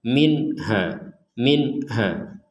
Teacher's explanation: ada nun sukun bertemu ha minha. Maka kita harus membacanya dengan jelas. Jelas itu artinya tidak ada dengung atau samar sama sekali. Tidak boleh didengungkan, tidak boleh disamarkan.